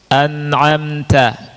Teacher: Walaupun disukun an'amta itu idhar, tetap ada gunahnya. Tetap ada gunahnya, tapi gunahnya namanya gunnatun asliyatun. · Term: pokok gunnah